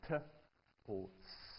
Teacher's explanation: you can put your tongue here, at the hard bit just above the teeth, as in t or s